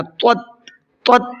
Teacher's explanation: وَأَحَاطَتْ، پہلے طا ہے پھر تا ہے، طا کو منہ بھر کے پڑھنا ہے اور تا کو نارمل پڑھنا ہے